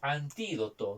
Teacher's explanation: Viene a ser prácticamente esdrújula, porque está en la antepenúltima sílaba la mayor fuerza de voz